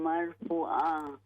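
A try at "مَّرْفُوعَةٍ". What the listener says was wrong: فو کو لمبا کریں گے. مرفوعہ.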